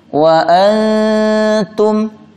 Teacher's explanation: Ini dalam ilmu tajwidnya disebut dengan ikhfa adna. Bunyi ikhfanya rendah atau tipis. Karena huruf setelahnya huruf ta di mana tempatnya itu di ujung lidah. Jadi bunyi ikhfanya tipis.